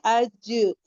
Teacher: हमारी टंग का middle part ऊपर को लग रहा है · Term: जीम